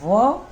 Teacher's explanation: नीचे वाला होठ, उसको कहेंगे दंतोष्ठ। दांत का भी हमको उसमें प्रयोग हो रहा है और ओष्ठ का भी हो रहा है।